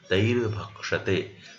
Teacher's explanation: So here the condition fulfills, and that's why what happened? This Visarga is replaced by R